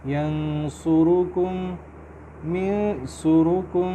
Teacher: کم کا میم اور اگلا میم جو من کا ہے وہ مل رہا ہے کیونکہ اس کے اوپر شد ہے، غنہ کریں گے